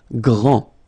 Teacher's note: Final day not pronounced. Okay, gr, gr, gr, gr. And then the nasal en.